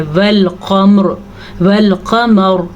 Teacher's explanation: را کو پر پڑھنا ہے اور موٹے قاف کو بھی پر پڑھنا ہے